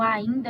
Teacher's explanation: esse I se transformou no I com nasalidade por conta do N, que é um som vizinho.